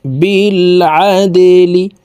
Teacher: বাকল কলার হরফ নিচের দিকে ধাবিত করে ধাক্কা দিয়ে উচ্চারণ করতে হবে